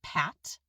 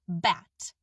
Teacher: the b is voiced. The vocal folds buzz.